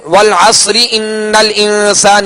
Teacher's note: را کے نیچے زیر ہے، لہذا اس را کو باریک پڑھیں گے. اور وقف کریں گے تو را ساکن سے پہلے والا حرف ساکن اور اس سے پہلے والے حرف پر زبر ہے تو اب اس کو پر پڑھیں گے.